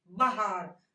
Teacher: बा और रा पे हमने कोई जोर नहीं दिया, बहार, हा पे जोर दिया है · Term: शब्द बलाघात